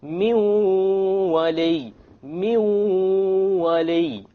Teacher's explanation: We have min wali. Likewise, we drop the noon because the waw is of the letters of idgham with ghunna